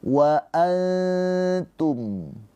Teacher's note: Dibaca dengan samar nunnya ditahan dua harakat sambil bersiap-siap masuk ke huruf ta. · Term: ikhfa hakiki